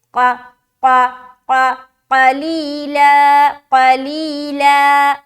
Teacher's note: ثمنا اخفا کرنے کے بعد جب ہم قلیلا بولیں گے تو دھیان رہے کہ ہمارا جو پہلا حرف قاف ہے وہ موٹا ہونا چاہیے